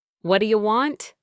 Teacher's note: The T in what changes to a D sound. And do you gets compressed into dia?